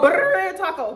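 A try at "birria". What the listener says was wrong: No. Why you say it like that? You stretching it. Berea.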